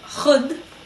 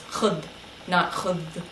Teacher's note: in this case the dhal does not change to a z sound, it changes to a d sound